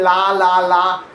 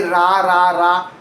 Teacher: L touches, R floats.